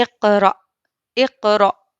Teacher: حمزہ ساکنہ کے پڑھنے میں جھٹکا ہوتا ہے